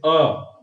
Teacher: गले पे ही झंझनाहट कंपन जो भी होता है सब गले पे ही है, दबाव गले पे ही बनता है। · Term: कंठ्य